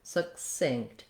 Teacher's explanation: first off the word succinct and succinctly they both have second syllable stress